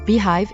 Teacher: pronouncing an H immediately after a long e sound